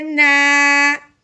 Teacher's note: زبر کی وجہ سے ایک الف کے برابر لمبا کرنا ہے